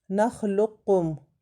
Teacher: قاف موٹا بھی ہے، کاف باریک بھی ہے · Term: ادغام متقاربین